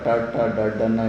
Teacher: full ಟವರ್ಗ ಟ ಟ ಡಡ್ಡನ್ನು ಹೇಳ್ತೀವಲ್ಲ, ಅವಾಗ ನೋಡಿ ನಾಲ್ಗೆಗೆ ಟಚ್ ಆಗುತ್ತೆ ಅಂದರೆ ಟ ಟ ಡಡ್ಡನ್ನು ಮೇಲ್ಗಡೆ ಸ್ಕಿನ್ಗೆ ಟಚ್ ಆಗುತ್ತೆ, ಮೂರ್ಧನ್ಯ ಅಂತಾರೆ